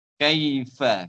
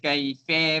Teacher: Kalau ka memang buka mulut betulah. Kalau ke di sempitkan sikit, dicondongkan sikit bunyi eh.